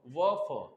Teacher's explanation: दंत के साथ ओठ की भी जरूरत पड़ रही है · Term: दंत ओष्ठ